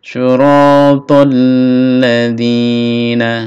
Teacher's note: ada tasdid ya, ditekan, ditahan. Syiratal ladzina, na pendek, na langsung a.